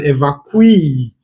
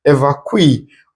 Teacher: And a person who has been evacuated is an evacuee. Where the stress is on the last syllable. Remember that words that end with ee are stressed on their final syllable.